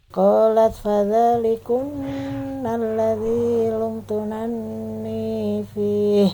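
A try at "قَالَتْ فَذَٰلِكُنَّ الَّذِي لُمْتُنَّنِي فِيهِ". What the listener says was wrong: Nah, di sini bukan lumtunanni tapi yang tasdid nun yang depan. Ya, sehingga dibacanya lumtunani, bukan lumtunanni tapi lumtunani. Jadi intinya yang double adalah yang depan, adapun yang belakang tidak. Jadi qalat fadzalikunna alladzi lumtunnani fi, bukan lumtunanni. Ya, kalau kita lumtunanni maka yang tasdid belakang, harusnya ini yang depan.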